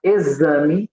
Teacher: Na palavra exame, esse X tem o som de Z.